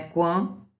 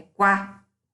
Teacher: não tem elemento nasalizador, ditongo oral